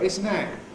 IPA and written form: ˈɪs ən ˈæt (this and that)